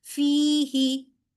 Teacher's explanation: ही को लंबा नहीं करना सिर्फ फी को लंबा करना है · ٹھیک ہے، فی ہی نہیں کہنا، یا اس کو ہی کو لمبا نہیں کرنا، صرف فی کو لمبا کرنا ہے، فا کو، کیونکہ آگے یائے مدہ ہے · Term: या मद्दा